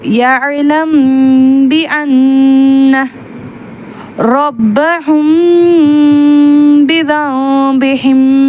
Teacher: அந்த மீமை நம்ம மறைச்சு உதடுகள் முழுமையாக ஒட்டாமல் குன்னாவுடன் ஓத வேண்டும் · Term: இக்ஃபா